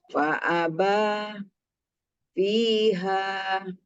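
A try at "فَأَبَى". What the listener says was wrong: Nah, ba Bu, ba-nya dibaca panjang. Ketika nyambung panjang.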